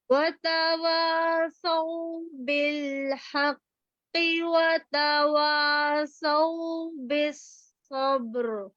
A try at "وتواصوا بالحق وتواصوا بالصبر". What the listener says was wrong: بالحق قاف کو مارک کر لیجیے، استعلا بہت کم ہو رہا ہے.